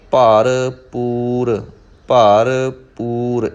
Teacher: ਪੱਪੇ ਦੀ ਜਿਹੜੀ ਸਾਊਂਡ ਹੈ ਉਹ ਪੱਪੇ ਦੀ ਹੀ ਰਹੇ, ਭੱਬਾ ਨਾ ਬਣੇ